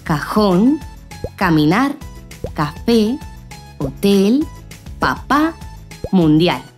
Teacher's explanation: el acento, es decir, la fuerza que se le da a la voz, recae sobre esa última sílaba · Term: palabras agudas